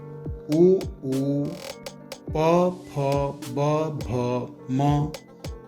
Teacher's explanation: उ, प, फ, ब, भ, म ओष्ठ की सहायता से बोले जाते हैं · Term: ओष्ठ स्थानीय वर्ण